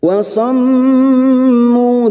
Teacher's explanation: mim yang bertasdid gunna musaddadah 3 harokat kita dengungkan